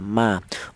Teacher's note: Untuk huruf mim keluarnya huruf berasal dari kedua bibir yang rapat